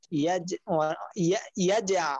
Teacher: আলাম ইয়াজ এখানে কলকলাটা করতে হবে অনেকে এটা করে না ইয়াজ ইয়াজ আল বলে এখানে আইনটা বলতে হবে আলাম ইয়াজ আল আইনটা চাপ দিয়ে বলতে হবে।